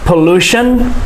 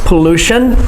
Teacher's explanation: The stress is on the second syllable, pollution.